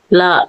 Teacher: நாவின் இரு பக்கங்கள் தடித்து மேல் பற்களின் அடியை தொடுவதால் லகரம் தோன்றும். வா போல இருப்பதால் இது வகர லகரம் எனப்படும்.